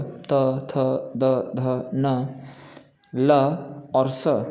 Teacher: त, थ, द, ध, न, ल और स का उच्चारण दांत से होता है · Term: दंत्या